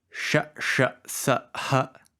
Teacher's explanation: the second sh is retroflex. The first one is palatal.